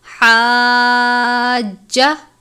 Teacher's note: جیم کے اوپر تشدید یعنی شد کی علامت ہے، جیم کو سختی سے پڑھیں گے، جیسے آپ لفظ کو چبا کے ادا کرتے ہیں حاجہ، اس طرح سے زیادہ لمبا نہیں کرنا کیونکہ جیم کے ساتھ کوئی حرکت نہیں ہے۔